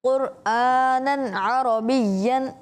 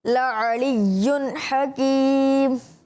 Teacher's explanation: انہوں نے تنوین میں غنہ نہیں کیا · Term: اظہار